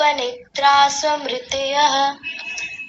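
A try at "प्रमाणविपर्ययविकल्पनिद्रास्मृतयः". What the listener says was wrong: आपने स को पूरा बना दिया था कैसे बोला आपने वो देखिए निद्रास मृतयः निद्रास ये गलत है निद्रास ऐसा नहीं निद्रास आधा है आधा ही बोलना है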